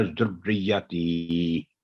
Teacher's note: تی کی آواز 2 سیکنڈ آواز لمبی ہوگی، کیونکہ تا کے نیچے زیر ہے اور آگے یا پر جزم ہے